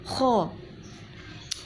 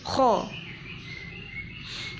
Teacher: Kalau pengucapan kho ada ngoroknya, kho, bibirnya moncong